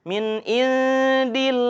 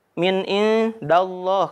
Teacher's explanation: kalau ada lafadz Allah berharokat kasroh itu dibacanya tipis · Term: tarqiq